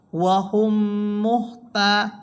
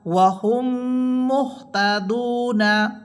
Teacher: দ্বিতীয় মিমে তাসদিদ দিয়া উক্ত মিম সাকিনকে গুন্নার সহিত মিলিয়ে পড়িতে হবে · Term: মিম সাকিনের ঈদগাম